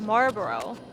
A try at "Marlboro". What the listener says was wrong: No, it's a solid L in there. It's bolded, which means it can't. It's big and bold, so it can't be silent.